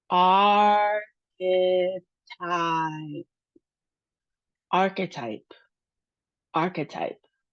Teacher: Now, this next one, we have three syllables. Our emphasis is on the very first syllable with a downward emphasis toward the last syllable.